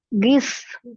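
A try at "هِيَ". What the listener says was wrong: கிஸ் தான் வருது. ஹைஸ். ஹைஸ். வித்தியாசம் இங்க நல்லா ஞாபகம். கிஸ் என்றதுக்கும் ஹைஸ் என்றதுக்கும் வித்தியாசம் இருக்குது. கிஸ் என்று ஓதுனா பிழை. திருப்பி கிஸ். மாறு, மாறி மாறி. கி என்று தான் வருது. அது பழகிட்டீங்க, அதான் பிரச்சனை. அது மாத்தணும். ஹைஸ். ஹைஸ். ஹைஸ். நீங்க கி கி கீய விட்டு வாரீங்க இல்ல. கி அல்ல அது. ஹை.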